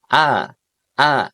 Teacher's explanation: Jadi walaupun hidungnya kita tekan ya, a a dia tetap jelas suaranya enggak boleh tertahan di suara hidung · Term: huruf hamzah